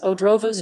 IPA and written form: ɔˈdrɔvɔ̃ʂ (Odrowąż)